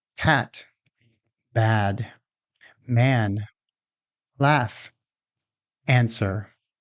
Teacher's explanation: This is a front open vowel. It means that your mouth is wide open, and your tongue is very low and forward. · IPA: /æ/